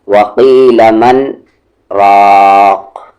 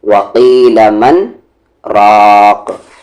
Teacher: سکتہ یعنی کہ کوما، یعنی رکنا ہے سانس نہیں توڑنا ہے